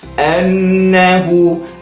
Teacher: Wajibul ghunnah, iaitu nun bertasydid. Jadi bila nun yang bertasydid, kita kena dengungkan.